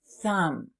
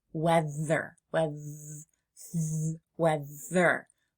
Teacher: I'm going to put my tongue gently between my teeth and blow the air out.